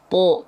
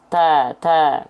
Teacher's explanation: bedanya kalau tho itu enggak keluar nafas th kalau ta keluar nafas